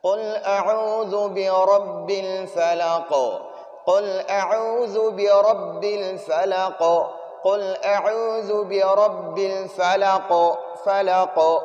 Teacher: قو یہ آخر میں یہ قو کا آواز نکلتا ہے، اس کو قلقلہ کہتے ہیں